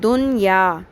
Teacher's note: جب نون ساکن کے بعد ان الفاظ میں سے حروف یمنوں میں سے کوئی حرف آ جائے تو وہاں اظہار مطلق کرتے ہیں. مطلق یعنی کہ بالکل نون ساکن کی آواز کو ظاہر کر کے پڑھتے ہیں